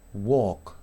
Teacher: No pronuncio la L, ¿sí?